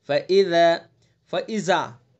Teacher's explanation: ذال کو جو مخرج ہے اس کے مخرج سے نکالنا ہے. زبان کی نوک اور ثنایا علیا کا کنارہ